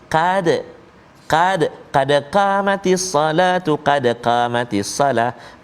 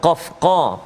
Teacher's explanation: Jadi qad qaf kena betul-betul. Qad tebal, qaf qa, pangkal lidah dia duduk belakang. Belakang pangkal lidah tu dekat dengan anak tekak kan.